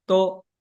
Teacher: Now, it's unaspirated. Okay, no air.